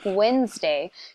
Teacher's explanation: I might pronounce it Wednesday because I know how it's spelled. But to someone just hearing the day of the week, Wednesday, you don't hear that D. The D is almost silent.